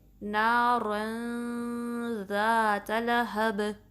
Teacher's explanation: رن کرتے ہوئے ہم نے نون کو پروناؤنس نہیں کرنا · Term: اخفا